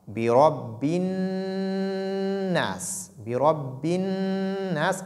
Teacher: Nun ici porte shadda. Donc, il y a une pression sur la lettre nun. Ensuite, il y a ce qu'on appelle une ghunna, donc une nasilation.